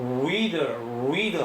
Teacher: 이 R은요 혀끝이 진동하면서 입 모양이 우자에 가까우면서 reader 하게 됩니다. 그래서 reader하는 발음에서 혀끝이 다르르 떨어요. 그래서 설전음입니다.